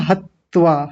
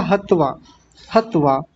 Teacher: यानी दो त जैसा उच्चारण नहीं आएगा